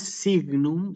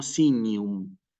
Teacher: la G con la n se pronuncia como una ñ desaparece de alguna manera la g y va a sonar así como sinum no es um okay